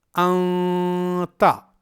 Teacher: اخفا کی آواز ایک الف کے برابر لمبی کرنی ہے · نون ساکن کی آواز ناک میں چھپائی جا رہی ہے۔ تو ہمیں انتا میں نون ساکن کی آواز کو ناک میں چھپانی ہے، نہ کہ اسے ظاہر کرنی ہے۔